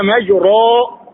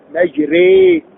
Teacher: وهذا خطا ل قلنا مجريها تلوناه بكسر وهذا خطا اين الصواب ان تجعل حرف الراء بين بين ويسمى هذا الحكم التجويدي بالاماله